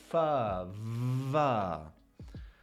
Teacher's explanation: with its labiodental, so lip plus teeth, fa, va. Other ones include sha, ja, post-alveolar, right behind that alveolar ridge, that bump right behind your teeth.